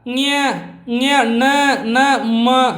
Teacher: ಇವೆಲ್ಲ ನಾಸಿಕದಿಂದ ಬರುವ ಉಚ್ಚಾರಣೆ ಆಗುವಂಥ ಅಕ್ಷರಗಳನ್ನು ನಾವು ಏನಂತ ಕರಿತೀವಪ್ಪ ಅಂದ್ರೆ ನಾಸಿಕ ವರ್ಣಗಳಂತೀವಿ